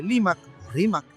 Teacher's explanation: propia del dialecto quechua hablado en la costa centro sureña peruana donde el fonema r era sustituido por l